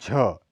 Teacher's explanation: इसका उच्चारण स्थान अग्रतालु है। झ, यह महाप्राण घोष ध्वनि है। इसका उच्चारण स्थान अग्रतालु है। इस वर्ण का उच्चारण अंतिम स्थान में होने पर इसका महाप्राणत्व अपेक्षाकृत कम हो जाता है।